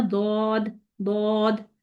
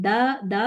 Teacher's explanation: इसके बाद number 3 difference इसका देखिए, जो दाल है उसमें दा दा करेंगे ना, दा में जबान का जो दरमियान है वो ऊपर को नहीं उठता, लेकिन दौद में जब आप इसको दौद अदा करेंगे तो उसमें आपकी जो जबान का वस्त वाला हिस्सा है, मिडल वाला हिस्सा, वो ऊपर को उठेगा। इसी तरह नंबर 4 पे आप देखें कि जब आप दाल को जब जो है वो कहाँ से अदा होता है, वो जबान की नोक से अदा हो रहा है, ठीक।